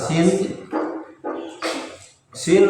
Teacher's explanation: makhrajnya ujung lidah nempel pada gigi seri bawah. sifatnya yang pertama dia alhams, yang kedua dia rakhwah, yang ketiga dia inigfar, yang keempat infitah. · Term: Sofir